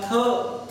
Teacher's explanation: थ म्हटल्यानंतर निश्चितच त्यामधून एक हवा निश्चित बाहेर टाकली जाते. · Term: महाप्राण